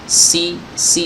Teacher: jadi suaranya desisnya kuat ya, desisnya kuat ya, aliran suara serta nafasnya juga kencang ya. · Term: sifat sofir